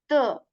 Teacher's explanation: you can say a bit lighter than the English version right tip of the tongue we place that behind the upper front two teeth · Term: th sound